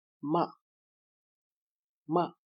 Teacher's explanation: Fourth tone falls from highest to lowest 5-1.